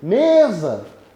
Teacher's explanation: a sílaba tônica de mesa eu me não está na última está na penúltima